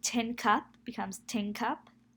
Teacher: So the answers would be, the first is regressive assimilation because the N alveolar pronunciation is replaced by the N velar pronunciation due to the presence of the K velar phoneme that comes after it